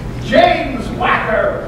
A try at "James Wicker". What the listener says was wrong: Wick. James Wicker. You said Wacker.